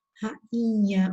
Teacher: é porque eu respiro pelo nariz quando eu falo, nasal. Então, se ele é o nasal, ele interfere na pronúncia.